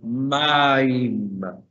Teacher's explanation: Vamos a hacer la fuerza, el acento en la primera sílaba.